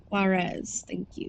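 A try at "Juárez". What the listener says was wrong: The J don't actually pronounce it. Juarez.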